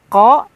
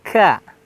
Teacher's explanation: terasa di tenggorokan kita yang lebih dalam yang berbeda dengan huruf kaf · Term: huruf qaf